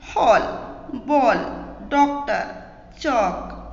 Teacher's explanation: इसका उच्चारण आ और ओ के बीच की ध्वनि के समान होता है। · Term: आगत ध्वनि